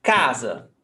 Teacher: Ca is the stressed syllable. No accent mark.